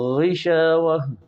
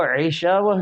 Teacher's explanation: غین زبان کی جڑ اوپر کے تالو کو لگے